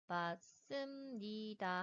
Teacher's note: 그래서 이 니은 울림소리의 영향을 받아서 두 번째 음절 받침에 있던 비읍 안울림 소리가 같은 울림소리인 미음으로 변화하게 되는 비음화가 일어나서 맞습니다가 표준 발음이 됩니다.